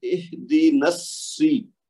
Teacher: نون صاد کے ساتھ مل جائے گی. صاد کو ڈبل کریں گے، زور دیں گے، تو صاد کے نیچے زیر ہے تو اہدنا السی.